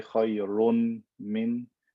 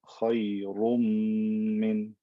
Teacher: I don't say khayrun min. I take the n sound, I merge it into the m.